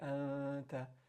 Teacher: your tongue is going to float. Your tongue is not going to touch the point of articulation of noon. So you're not going to make the n sound. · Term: hide the noon sound